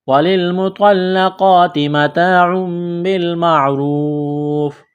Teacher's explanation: وَلِلْمُطَلَّقَاتِ مَتَاعٌ بِالْمَعْرُوفِ، لام کو لام کے ساتھ ملائیں گے، پلس کریں گے، طوا کو موٹا کرنا ہے، یہ بڑی تا ہے، آگے لام کے اوپر تشدید ہے تو طوا کو لام کے ساتھ ملائیں گے، لام میں سختی کریں گے۔ قاف ہے نقطہ والا، اس کو موٹا کرنا ہے، بڑا قاف ہے، کڑا زبر ہے، الف کے برابر کھینچنا ہے، تا کو باریک کرنا ہے۔ · عین کے اوپر دو پیش تنوین ہے، تنوین کے بعد با ہے تو یہاں پر اقلاب کریں گے، آواز ناک میں چھپائیں گے